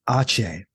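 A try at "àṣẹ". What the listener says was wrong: Just don't pronounce it like ache.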